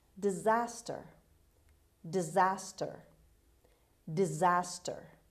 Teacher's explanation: to excessive rain inhabitants as word number seven disaster disaster disaster the stress is on z on the second syllable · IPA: /dɪˈzæstər/